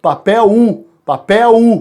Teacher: A palavra papel foneticamente apresenta um ditongo decrescente? Sim, porque o L vai fazer o som do U.